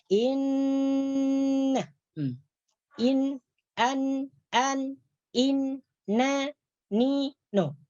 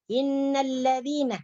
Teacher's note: Ketika kita menyebutkan na, maka ada udara yang keluar daripada hidung. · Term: bunyi huruf nun